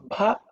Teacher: Ba is no air hitting the hand. Bha means air will hit. That means mahaprana. Okay, more air should be blown.